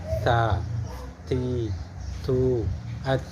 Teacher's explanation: Ujung lidah menyentuh pangkal gigi seri atas. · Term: hams